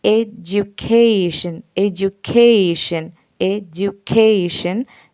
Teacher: the primary stress falls on the third syllable, cation